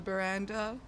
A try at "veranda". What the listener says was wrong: It's veranda. The. Not ba.